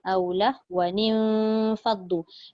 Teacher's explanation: nun mati yang kedua itu bertemu dengan fa. Dia jadi ikhfa hakiki, maka perlulah didengungkan mengikut hukum yang dah disediakan.